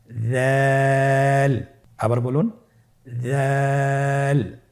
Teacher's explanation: দালের মাখরাজ হলো জিহ্বার আগা সামনের উপরের 2 দাঁতের আগার সঙ্গে লাগিয়ে উচ্চারিত হয়